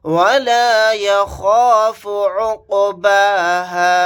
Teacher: خوا کو موٹا یعنی پر پڑھیں گے